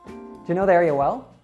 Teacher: you can reduce the word do and you to do ya, or just ja.